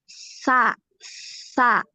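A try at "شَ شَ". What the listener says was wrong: Masih di ujung. Jadi ke tengah, ya di tengah. Tadi sama, makhrajnya itu seperti huruf iya, gitu ya. Sha, sha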